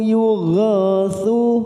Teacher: yugha fathah diikuti alif 2 harokat, ghasu dima bertemu sukun 2 harokat.